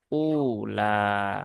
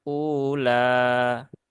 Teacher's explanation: Hamzah yang kedua itu dibadalkan menjadi huruf mad karena yang depan itu adalah harakatnya damah maka huruf mad yang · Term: mad badal